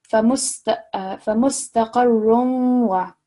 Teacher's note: Over here, you'll remember hopefully that this is partial assimilation. So this is where you slightly hear the nasal sound when you're merging the two sounds together with waw mushaddad and ya mushaddad